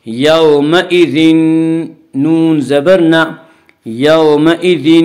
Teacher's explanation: تنوین کو نون نون سے ملا کر غنہ کے ساتھ پڑھیں گے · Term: ادغام مع الغنہ